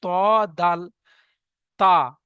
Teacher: জিভের আগা এবং সামনের উপরের দুই দাঁতের গোড়ার সাথে লাগিয়ে উচ্চারিত হয়